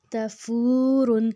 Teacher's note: اب جو تا ہے یہ پتلے والا تا ہے، اس کو اگر موٹا کریں گے تو وہ طوا بن جائے گا